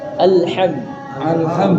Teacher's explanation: Nah, L-nya di belakang gigi seri atas.